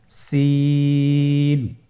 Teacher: জিহ্বার আগা সামনের নিচের দুই দাঁতের পেট ও আগার সঙ্গে লাগিয়ে উচ্চারিত হয় জয়ের মতই জয়ের যে মাখরাজ সিনের একই মাখরাজ আপনারা সিন হরফটি আবার উচ্চারণ করুন সিন আবার উচ্চারণ করুন সিন মাশআল্লাহ আলহামদুলিল্লাহ আমরা অল্প সময়ে পাঁচটি হরফ শিখে ফেলেছি।